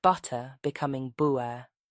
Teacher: in some British accents where te is replaced with a glottal stop